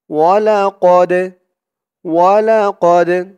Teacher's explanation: এই দালটা হচ্ছে কলকলার হরফ ধাক্কা দিয়ে পড়তে হবে